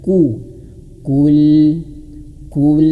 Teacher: huruf qof dia domah maka menyunkan bibirnya. Ku kul a. Kemudian hamzahnya harus jelas ya.